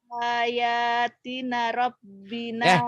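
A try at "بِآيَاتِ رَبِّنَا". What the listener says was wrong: Bi ayati bukan nggak ada anaknya. Bi ayati rabbina, bukan bi ayatina rabbina. Bi ayati rabbina.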